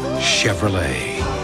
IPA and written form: ʃɛvrəˈleɪ (Chevrolet)